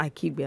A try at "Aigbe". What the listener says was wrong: It's Ahigbe. Ahigbe. The K is silent.